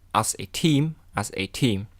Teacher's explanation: Many words in a sentence are unstressed or weak forms. For example, in a phrase as a team, as a is unstressed